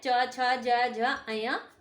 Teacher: च, छ, ज, झ, अया तालू से बोले जाते हैं।